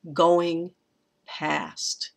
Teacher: Going is a trochee, stressed, unstressed. And then that past, I think, is there alone.